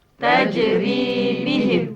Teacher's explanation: Ri ini baca panjang dua harakat. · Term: mad asli